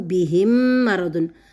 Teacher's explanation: اب میم ساکنہ کے بعد حروف میم، تو یہاں پہ ہمارا ہو رہا ہے ادغام میم ساکنہ۔